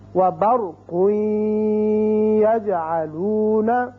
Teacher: قاف کے اوپر 2 پیش تنوین ہے، آپ نے ادغام کیا غنے کے ساتھ، بعد میں یا آ گیا